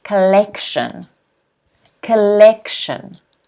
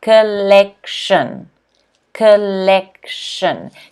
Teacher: notice the stress here is on the second syllable.